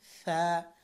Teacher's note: জিহ্বার আগা এই উপরের দাঁতের আগার সাথে লাগাতে হবে